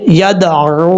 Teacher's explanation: لیکن یہاں پر واو کے اوپر واو ساکن ہے، اس کے اوپر مد بھی ہے اور یہ مد منفصل ہے. 2.5 سے 3 الف کے برابر آپ اس کو لمبا کر کے پڑھ سکتے ہیں. اب اس کے بعد جو الف ہے، اس الف کو پڑھنے کی ضرورت نہیں.